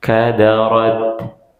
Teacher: ketika taknya disukunkan, keluarnya sedikit saja, keluar hamusnya sedikit saja